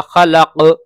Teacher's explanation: یہ غلط ہے، خلق قلقلہ ہوگا، خلق، تو اس طریقے سے پڑھنا ہے